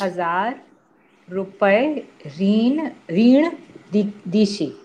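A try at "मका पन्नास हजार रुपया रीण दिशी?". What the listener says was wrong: Dishi. Question. Dishi in Konkani. Dishi is a question mark. You have to raise your voice. Maka pannas hazar rupai reen dishi.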